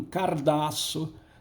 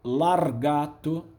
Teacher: ele não tirou nenhum fonema, ele apenas deslocou, houve uma transposição de fonemas. Dá-se a isso o nome de metátese, metátese, tá?